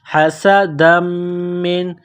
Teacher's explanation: سین میں سیٹی کی آواز پیدا کریں گے، سین کو باریک کرنا ہے · حسدا من، دال کو میم کے ساتھ پلس کرنا ہے، میم مشدد ہے تو غنہ کریں گے، آواز ناک میں چھپائیں گے